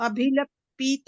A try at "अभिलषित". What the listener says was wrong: पीत नहीं है, श है वो, अभिलषित।